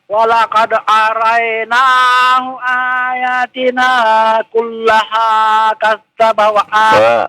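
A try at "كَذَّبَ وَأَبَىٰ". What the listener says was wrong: ada fa-nya, ketinggalan fa-nya itu. Ada fa itu ya?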